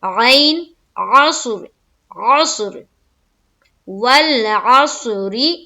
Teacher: دیکھیں صاد کو منہ بھر کر پڑھنا، عین کو کہاں سے نکالنا ہے، حلق سے